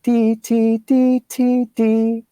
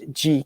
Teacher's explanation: G sound the idea is that if this is your tongue the tip of the tongue does the DT the rear of the tongue does the GK